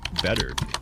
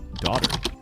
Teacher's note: In American English, the T sound often changes, especially when it's between two vowel sounds. Instead of a clear T, it sounds more like a soft D. This makes speech flow more smoothly. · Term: T sound changes